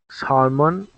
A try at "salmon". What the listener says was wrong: This word, salmon, is the correct pronunciation. It is salmon. Salmon. Salmon. There is not a L sound. The L sound, you cannot pronounce the L sound. You say salmon. Salmon. Salmon.